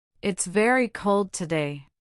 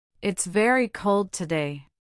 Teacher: Hear the emphasis on very.